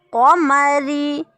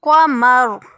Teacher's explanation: ہجوں کی صورت میں را بریک کیونکہ را کے نیچے زیر ہے، لیکن وقف کریں گے تو را کے اوپر جزم آ جائے گی، پھر را پور پڑی جائے گی.